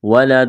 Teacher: وقف کریں گے، دال پر قلقلہ کریں گے